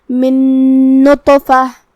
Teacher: ادغام کا معنی ہے حرف کو حرف میں داخل کرنا، تو ہم نون ساکن کو دوسرے نون میں ملاتے ہوئے غنہ اور تشدید کے ساتھ یہ حکم کو ادا کریں گے